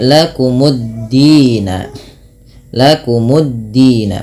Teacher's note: lamnya tidak ada lagi sehingga dalnya tasydid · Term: idgham syamsiyah